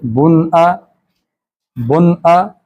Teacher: اس نون کی آواز بالکل شارٹ ہوتی ہے، نون ظاہر کر کے پڑھی جاتی ہے، اس کو ناک سے ادا نہیں کرتے لمبا کر کے